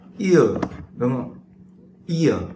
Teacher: Các bạn không đánh vần như kiểu tiếng Việt, là ví dụ ai hay là ua, các bạn không đánh vần như tiếng Việt như vậy, mà các bạn sẽ đọc đôi, nhưng mà các bạn sẽ đọc nguyên âm đôi này theo cái hình thức là hai âm rời nhưng nuốt nhanh vào nhau, thì nó tạo ra tiếng Anh nó tạo ra cái âm như là âm gió đấy, là ear, đúng không?